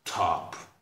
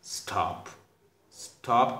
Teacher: There is a great difference. It means the first one is aspirated and second one is non-aspirated